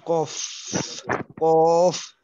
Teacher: এবার আপনি বলেন 4 নম্বর মাখরাজ। জিহ্বার গোড়া তার বরাবর উপরের তালুর সঙ্গে লাগাইয়া উচ্চারিত হয়। কফ কফ বলতে হবে 2 নক্তাওয়ালা কফ, তাহলে 2 নক্তাওয়ালা কফ।